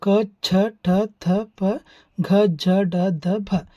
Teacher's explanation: ಹೆಚ್ಚು ಉಸಿರಿನ ಸಹಾಯದಿಂದ ಉಚ್ಚರಿಸಲ್ಪಡತಕ್ಕಂತಹ ಅಕ್ಷರಗಳಿಗೆ ಮಹಾಪ್ರಾಣ ಅಂತ ಕರೀತೀವಿ. ಇವು ಒಟ್ಟು ಕೂಡ ಹತ್ತು ಅದಾವು.